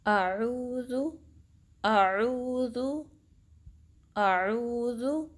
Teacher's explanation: हमज़ा अक्सर हल्क से निकलता है, यानी कि deep part of the throat, और आइन वसतुल हल्क से निकलता है।